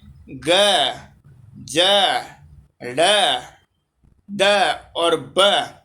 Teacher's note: ये श्वास नहीं है, नाद। फिर अघोष नहीं है, घोष है और अल्प प्राण है।